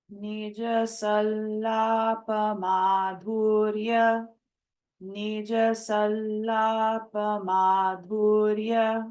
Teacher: the anuswara, it's taking the sound of a nasalized la, and Mahaprana dha is there.